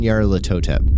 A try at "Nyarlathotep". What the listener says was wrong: There's an L in there you're not even pronouncing.